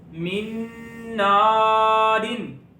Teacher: نون کو لمبا اس لیے کر رہے ہیں کہ الف سے پہلے زبر ہے، اس لیے الف مدہ ہو رہا ہے